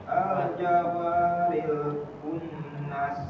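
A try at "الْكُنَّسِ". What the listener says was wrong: Nunnya di gunahnya lebih dilamakan. Al-kunnas. Jadi tidak terburu-buru, ya.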